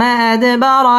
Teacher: দাল কলকলার হরফ ধাক্কা দিয়ে পড়তে হবে